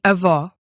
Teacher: Then came O as in avó, which had a lower tongue position and more relaxed lips.